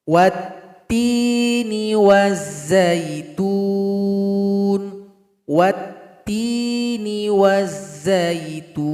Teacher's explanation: huruf lam yang alif lam ini dia telah bergabung kepada huruf ta yang tasydid ini. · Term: idgham syamsiyah